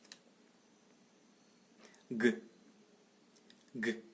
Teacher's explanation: Orale, occlusive, palatale, sonore.